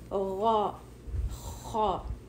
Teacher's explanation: جی تو ہمیں تھوڑا ماؤتھ فل لگے گا, اور back of the tongue should be raised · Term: ہیوی لیٹرز